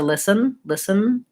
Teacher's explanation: If I say I'm just listen, or I'd like to listen, listen, it's kind of like a syllabic N where there's not much of a vowel there before it.